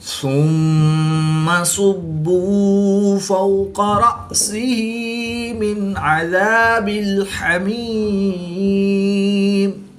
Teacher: میم مشدد میں ہمیشہ غنہ ہوتا ہے یعنی غنہ آنی کر کے پڑھیں گے۔